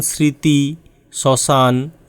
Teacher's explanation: প্রথমত শব্দের শুরুতে ম ফলার উচ্চারণ হয় না।